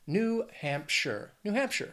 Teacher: that last syllable it's not sh it's not like Frodo in the Shire it's sure · two words three syllables the stress is going to be on that first syllable in the second word · The stress is gonna be on that first syllable and the second word, looking at Hampshire. Now, that last syllable, it's not Shire. It's not like Frodo in the Shire. It's sure.